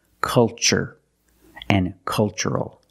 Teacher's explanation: the first syllable is a short u like cup and up uh uh make a relaxed sound